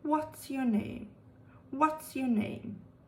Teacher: a pitch starts off quite high at the beginning of a question and it gradually falls towards the end of a question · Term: falling intonation pattern